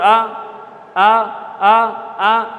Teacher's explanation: जीभ बीच वाली उठ के जा रही है ऊपर की तरफ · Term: मध्य स्वर